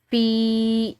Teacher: یا ساکن کی وجہ سے فا کو ہم نے لمبا پڑھا